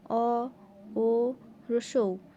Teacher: এই স্বরধ্বনি 3টি উচ্চারণের সময় আমাদের জিহ্বা মুখের মধ্য পিছনে দিকে অর্থাৎ গলার দিকে গুটিয়ে যায় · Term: পশ্চাৎ স্বরধ্বনি